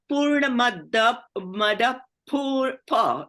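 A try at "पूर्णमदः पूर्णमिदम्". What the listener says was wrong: No, the Visarga, Purnamada, and the Visarga will be pronounced as if an F before the P of Purna. So it will be Purnamada Purnamidam.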